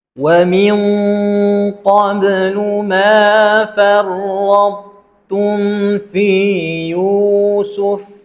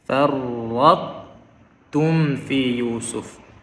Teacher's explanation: Kita menjelaskan dengan kita mengekalkan sifat itbaq yang ada bagi huruf ta.